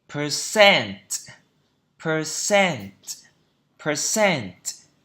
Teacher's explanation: Percent. Trọng âm thứ hai. Percent. Đấy, cứ nhìn vào phiên âm mà chúng ta đọc thôi.